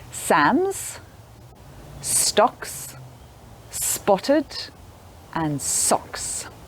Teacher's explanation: your lips and teeth close together and blowing air out so we don't use our voice box for either of these sounds